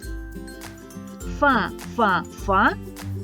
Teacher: звук ф приголосний бо повітря що виходить з ротика зустрічає на своєму шляху перешкоду нижню губу та верхні зуби він глухий твердий